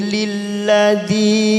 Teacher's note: kasar bertemu ya sukun 2 harokat kita panjangkan